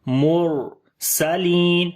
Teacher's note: را کو موٹا بھی پڑھیں گے, را کے اوپر جزم ہے, اس سے پہلے پیش ہے, اس وجہ سے مرسلین.